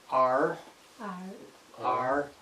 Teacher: r comes from the back of the mouth